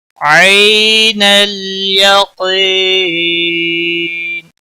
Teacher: یا لین ہے، تھوڑا نرمی کے ساتھ کھینچ کر پڑھیں گے، یا لین اور واو لین، حروف لین 2 ہیں، جب بھی ان کے پچھلے حرف کے اوپر زبر ہوتی ہے تو یا لین اور واو لین کہلاتا ہے۔